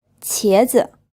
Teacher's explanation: This is pronounced with a second tone, and then the second syllable is unstressed.